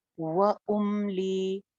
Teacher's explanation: मीम को जमा के पढ़ें, वाव पे होंठ गोल करें